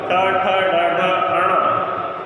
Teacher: ऋवर्ण, ट वर्ग, रकार, सकार, इनका स्थान मूर्धा होता है